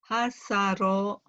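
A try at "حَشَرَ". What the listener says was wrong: Hasara. Hasyara. Ya, shinnya hasyara gitu Bu. Hasyara. Shinnya kurang angin. Hasyara. Shin.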